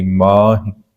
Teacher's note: ਮਮੇ ਨੂੰ ਜਿਹੜਾ ਹੈ ਕੰਨੇ ਦੀ ਮਾਤਰਾ ਆ ਤੇ ਹਾਹੇ ਨੂੰ ਸਿਹਾਰੀ ਹੈ। ਹਾਹੇ ਨੂੰ ਸਿਹਾਰੀ ਲਘੂ ਮਾਤਰਾ ਆ ਤੇ ਇਹ ਨਾਸਕੀ ਹੋ ਜਾਏਗੀ, ਮਾਹਿ। ਸੋ ਇਦਾਂ ਇਹਦਾ ਪਾਠ ਪੜਿਆ ਜਾਵੇਗਾ।